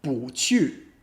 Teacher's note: So even though it's 不吃, fourth tone, first tone, if you want to say 不去, it becomes second tone, fourth tone